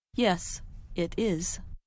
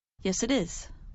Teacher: those three words, yes, it is, can sound like one word